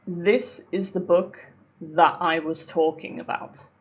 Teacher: They're all voiced th sounds.